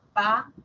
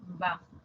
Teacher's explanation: Para decir el sonido P, las cuerdas vocales no han vibrado. Para decir el sonido B, sí vibraron.